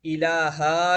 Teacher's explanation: لفظ الہ کے آخر میں الف بڑھانا، جس سے یہ الہا کی طرح لگتا ہے